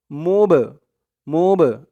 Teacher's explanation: বাটা কলকলার হরফ ধাক্কা দিয়ে পড়তে হবে কলকলা মানে ধাক্কা দিয়ে পড়া